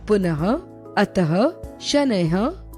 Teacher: विसर्ग, संस्कृत से हिंदी में आए कुछ शब्दों के साथ विसर्ग की मात्रा अह का प्रयोग किया जाता है। इसका उच्चारण हल्के ह के समान होता है